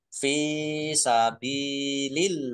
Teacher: Allahnya dibaca tipis karena harokat di depannya kasroh. Sabilillah, lam fathah berdiri mat tobi'i, tetapi karena bertemu dengan huruf terakhir yang dibaca sukun karena wakof maka menjadi mat arid lis sukun, dibaca panjang boleh 6, boleh 4, boleh 2 harokat.